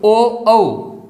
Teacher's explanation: ओ औ इनका उच्चारण स्थान कंठोष्ठम। कंठ और ओष्ठ दोनों से ही है, कंठ और होठ दोनों से ही है।